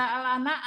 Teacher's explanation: Saya biasa membaca al-ana, A-nya panjang 6 harokat